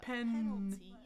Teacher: No voicing. Remember, N on the bump, through the nose.